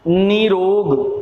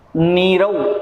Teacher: तो यहाँ ये कहा गया है कि विसर्ग जो है इस विसर्ग से पूर्व छोटी और छोटा ऊ अगर है तो छोटी छोटा ऊ हो, इसके बाद दूसरे शब्द का प्रथम वर्ण अगर ये र आ रहा है तो र आने पर विसर्ग का तो लोप हो जाएगा, और छोटी ई है तो वो बड़ी में बदल जाएगी, छोटा ऊ है तो वो बड़े ऊ में बदल जाएगा।